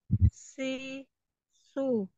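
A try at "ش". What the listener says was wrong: Nah, ini makhrajnya belum tepat ya. Makhrajnya belum tepat. Anti masih di ujung lidah. Keluar suaranya dari situ. Tengah, tengah ya. Tengah. Tengah lidahnya naik. Tengah lidahnya dinaikkan ke langit-langit. Sha. Sha. Naik tengah lidahnya.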